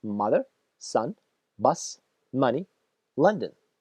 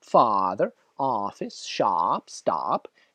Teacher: Mother – это короткий А, как в слове автобус, bus. А father – это длинный А, как в звуке stop, office.